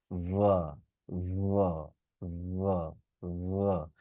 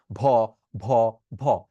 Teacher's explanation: উপরের দাঁত আর নিচের ঠোঁট দিয়ে আমি গলায় কাঁপুনি দিব। এবং এটা ভাইব্রেশন,